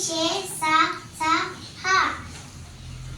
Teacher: గాలిని బయటికి ఊదుతూ పలికే అక్షరాలను ఊష్మాలు అని అంటారు. అవి షే, స, స, హ.